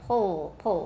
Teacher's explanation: it's the back of your tongue that becomes very tense and it gets close to your soft palate